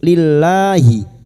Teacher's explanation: Billahi lam jalalah yang didahului kasroh. Kita baca tarkik